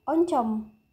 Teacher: vokal O tengah bawah, belakang, bundar. Contoh katanya yaitu oncom.